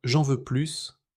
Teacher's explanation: Mais dans J'en veux plus, le S se prononce pour insister